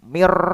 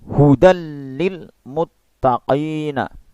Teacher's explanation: Di sini kita membacanya juga dilebur, ya, dilebur. Tapi meleburnya ini tanpa dengung. Tidak boleh disertai dengung. Tidak boleh mir. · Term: idgham bila gunnah